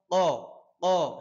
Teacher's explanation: জিহ্বার গোড়া তার বরাবর উপরের তালুর সাথে লাগবে,